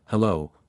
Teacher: oh say it like H H the H is soft and the stress is on the second part of the word